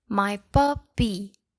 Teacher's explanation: So pup will be stressed